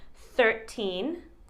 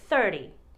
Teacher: 13 said with a T, 30 said with a T that sounds like a D.